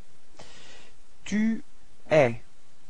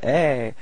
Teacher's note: so you can notice that it's open eh, eh. So don't be afraid to open your mouth.